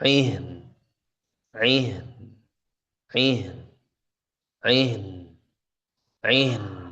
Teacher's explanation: Jadi suaranya terus alirkan sampai menyentuh nun ya. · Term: ghunah